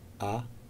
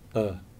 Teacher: what's moving is the jaw the jaw down jaw halfway up